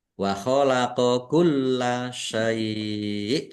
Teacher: lamnya ada tasdidnya dibaca dobel ditekan dan ditahan